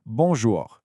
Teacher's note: And now we've arrived at the most signature French sound of them all, the nasal vowels. This is where the sound comes out partly through your nose.